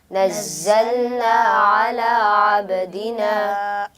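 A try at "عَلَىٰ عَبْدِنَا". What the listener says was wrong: आइन को दुरुस्त तरीके से पढ़िए, अला अब्दिना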